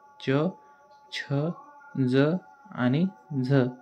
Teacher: यामध्ये आपण जिभेचा आकार अशा प्रकारे करतो की जो आवाज निघणार आहे तो दात आणि आपला जो कठोर तालू आहे दाताच्या पाठीमागचा तिथून निघतो, म्हणून त्यांना दंत तालव्य वर्ण असे म्हणतात. · आपण जे शब्द उच्चारताना दाताच्या पाठीमागील जो भाग आहे तो आणि दात या दोघांचा वापर करतो